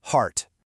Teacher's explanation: it's actually pronounced exactly like the word art, just with a clear breathy H placed right in front of it